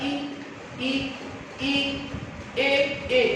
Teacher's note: अब हमको उच्चारण में देखना होता है कि जीभ का कौन सा भाग काम कर रहा है, तो इसके लिए सीधा सा आप याद रखिए कि अग्रभाग में हमने किसी से बोला ई ई ई ए, जीभ का अगला भाग काम कर रहा है